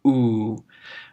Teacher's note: When epsilon runs into oo, it just makes a longer oo, stretched out. · short o gives us ooh when they run into each other when epsilon runs into you it just makes a longer ooh stretched out that's that circumflex telling you to really stretch it out ooh